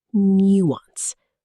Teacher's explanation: 2 syllables. The stress falls on the first. Nuance. The word comes from French, and some speakers preserve a slight French quality in the vowel sounds.